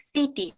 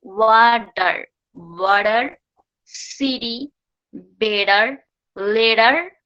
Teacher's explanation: টিটা ডি এর মতো উচ্চারণ হয় শুধু একটা ক্ষেত্রে, সেটা যদি ফ্লাপটি হয়, তখন টিটা ডি এর মতো উচ্চারণ হয়